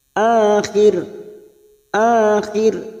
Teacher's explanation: Maka huruf ro kita baca tarkik karena sebelumnya ada harokat kasroh. Ro yang dibaca wakaf, yang sebelumnya ada harokat kasroh. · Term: tarkik atau tipis